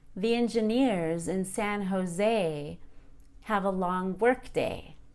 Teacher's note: The day in workday is not prolonged as it was in day. In the compound noun workday, work is stressed instead of day.